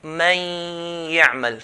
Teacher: Now if you notice, when I say the ya, man ya'mal, I'm saying the ya with the ghunna of the nun. So man, that sound, that's called the ghunna sound. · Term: idgham with ghunna